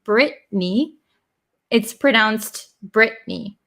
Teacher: It's pronounced Brittany, but there's actually two T's in there, Brittany. But the vowel sound and the N sound cancel out the T. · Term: dropping the T